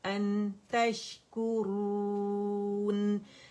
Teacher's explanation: सुम्मा बअस्नाकुम मिन बअदि मौतिकुम लअल्लकुम तशकुरून। और ये जो आखिर का जो नून सुकून है या 1 काउंट का फितरी गुन्ना आपको फील होगा